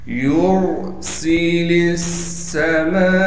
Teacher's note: سین کو باریک کر کے سین میں سیٹی ادا کر کے پڑھیں گے. لام کو ہم ڈائریکٹ اس سین سے ملا دیں گے اس لیے کہ سین پر تشدید ہے. · یا کو را سے ملا دیں گے اس لیے کہ را ساکن ہے اور را سے پہلے پیش ہونے کی وجہ سے را کو موٹا کر کے پڑھیں گے. سین کو باریک کر کے سین میں سیٹی ادا کر کے پڑھیں گے.